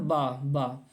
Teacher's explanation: तो नीचे वाला ओंठ ऊपर वाले ओंठ को छूता है, दांत को भी छूता है।